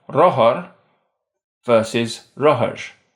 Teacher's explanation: You'll notice that the slender R has quite a bit of friction at the end of syllables.